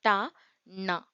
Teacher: அன்னத்தின் நுனிய நாவினுடைய நுனிப்பகுதி பொருந்த பிறக்கும் எழுத்துக்கள்